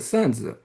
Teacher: in Tokmak, the Shanxi variety, the stress is on the first syllable